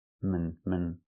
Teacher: The second syllable is relaxed and closed.